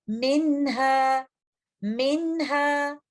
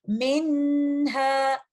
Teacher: تو ایسی صورت میں نون ساکنہ کو ہم کلیئر پڑھیں گے، اور اس کو انکمپلیٹ غنہ کا ٹائم دیں گے، اور اس لفظ کی ادائیگی کچھ اس طرح سے کریں گے، منہا منہا۔ ہمیں یہاں پر نون ساکنہ کو بہت زیادہ دیر ہولڈ کرنے کی ضرورت نہیں ہے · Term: اظہار